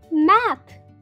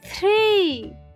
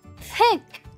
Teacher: That's the sound that comes when you put your tongue between your upper teeth and lower teeth and blow air. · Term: digraph TH